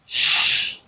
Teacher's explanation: when you say sh there's no vibration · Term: voiceless consonant sounds